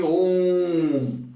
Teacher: ओम जब बोला जाता है तो ओ का जो उच्चारण हम लोग कर रहे हैं वो थोड़ा लंबे टाइम तक, थोड़ा ज्यादा देर तक हम लोग बोल रहे हैं, इसलिए इसमें प्लूत का भाव आ गया है।